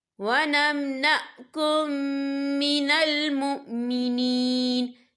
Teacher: ہم پچھلے میم کو اگلے میم میں مدغم کریں گے اور ہم یہاں غنہ بھی کریں گے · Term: ادغام شفیع